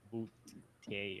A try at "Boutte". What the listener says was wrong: I think it's like a D, not 2 T's.